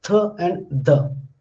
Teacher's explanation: Most of the Indian speakers, they want to produce th and the interdental, because interdental means that your tip of the tongue is in between upper and lower teeth. But generally they produce as these sounds as dental.